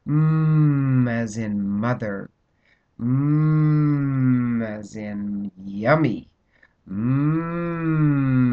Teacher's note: these are the nasals and you should feel that in your face